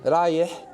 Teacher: the vowel is small, even though the H goes on for like half a minute